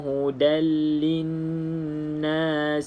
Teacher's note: kalau lepas dia lam ataupun ra, maka kita jangan baca dengung. Terus masuk dalam lam.